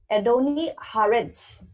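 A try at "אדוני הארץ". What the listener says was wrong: Yeah, you just put a little extra pause in the ah. Ha-aretz.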